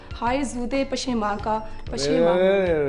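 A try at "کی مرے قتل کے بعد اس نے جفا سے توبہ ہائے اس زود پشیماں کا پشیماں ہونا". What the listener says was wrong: गालिब का शेर गलत बर्दाश्त नहीं हो सकता, फिर से पढ़े इसको। प्रोनाउंसिएशन नहीं, आप लफ्ज़ खा रही हैं।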